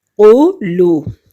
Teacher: واو ساکن سے پہلے لفظ پر یعنی لام پر پیش ہے تو یہ واو مدہ ہے، اس کو بھی ایک حرکت کے برابر ہم کھینچیں گے.